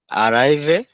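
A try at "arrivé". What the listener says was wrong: আখিভে। আখিভে। খ না, এটা আসলে এটা খ, এরকম খ, একটা গলার মধ্যে ধাক্কা দিয়ে খ। আলেখ, আখিভে, খি, খি।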